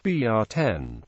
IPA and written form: ˈbrɛtən (Breton)